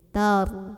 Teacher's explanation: Karena kalau ro sukun mau menentukan tafkhim tarqiqnya, kita tinggal lihat aja huruf sebelumnya. Karena huruf sebelumnya fathah, maka ro-nya tebal, pangkal lidah naikin.